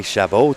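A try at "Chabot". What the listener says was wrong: You forgot the t.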